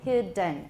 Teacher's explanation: central oral stack right so let's try releasing it orally done between the d and the n we have what a schwa